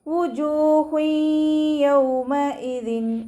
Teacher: വാവ് ഉച്ചരിക്കുമ്പോൾ ചുണ്ടുകൾ ഒന്ന് സർക്കിൾ ചെയ്ത് കൊടുക്കുക. ജീമിൻ്റെ കൂടെ വാവ് മദ് വന്നു.